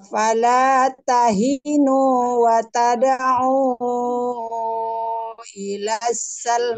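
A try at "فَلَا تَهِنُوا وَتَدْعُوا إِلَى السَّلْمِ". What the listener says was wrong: Nah, kepanjangan, Bu. Kepanjangan.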